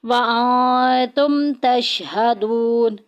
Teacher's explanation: تم میں دیکھیں میم ساکن آ گئی ہے اور میم ساکن کے بعد آ گیا ہے تا، اظہار شفی ہوگا، ظاہر کر کے پڑھیں گے · دون میں دیکھیں واو ساکن پیچھے پیش، واو مدہ کا قاعدہ جاری ہو رہا ہے ، ایک الف کے